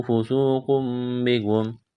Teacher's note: واو مدہ ہے، ایک الف کے برابر کھینچنا ہے، قاف کو موٹا کرنا ہے. تنوین کے بعد با ہے تو یہاں پر اقلاب کریں گے، آواز ناک میں چھپائیں گے، وقف کریں گے تو سیم پڑھیں گے.